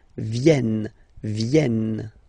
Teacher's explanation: this classic ending ENT for the third person of the plural is here, but phonetically doesn't exist, so you don't pronounce it